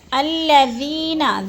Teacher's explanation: ذی کو ہم نے تھوڑا سا لمبا کرنا ہے کیونکہ ادھر یا مدہ ہے